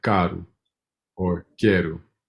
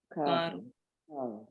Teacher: when the O is on the end of a word, it has a U sound